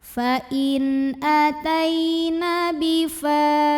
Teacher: Karena ada alif yang didahului baris fathah, maka dibaca panjang fa-nya 2 harokat. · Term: mad tabi'i